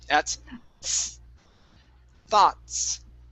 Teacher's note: Thoughts. Okay, so at the end of the word, you're pronouncing a T and an S together